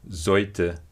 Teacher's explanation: the simplification of the palatal consonants ch and j, and also nj, which have become y before another consonant